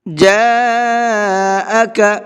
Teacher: جاءک، یہاں پر بھی بڑا مد ہے تو اس کو بھی 4 سے 5 الف کی برابر کھینچ کر کے پڑھیں گے